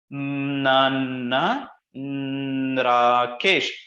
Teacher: before initiating a vowel, you are having it as with a nasal characteristics to that voice onset · introducing the nasal tinge for all the vowels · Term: nasal swinging accent